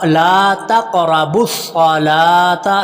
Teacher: لام کو لمبا کریں گے، لام کے اوپر کھڑی زبر ہے